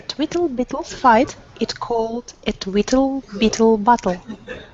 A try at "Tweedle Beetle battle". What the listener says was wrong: The one distinction is that you're saying it all tweakle, beetle, battle. You're ending it all tull. And you want to make sure that because these noises, they're written with T's.